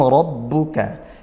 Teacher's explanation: ra dibaca tafkhim tebal fathah karena dia fathah